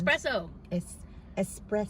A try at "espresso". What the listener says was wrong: Don't just say what you were saying. Espresso. There's no X there.